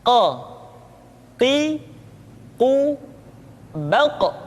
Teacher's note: Huruf Qaf diucapkan dengan cara menyentuhkan pangkal lidah kita dengan langit-langit bagian belakang.